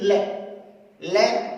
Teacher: हमारी जिह्वा कहां स्पर्श कर रही है, दंते, यानी दांत को स्पर्श कर रही है। इस वजह से ले का उच्चारण स्थान हो गया दंते।